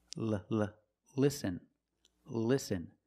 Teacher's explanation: when you have an L at the start of a word before a vowel that's a light L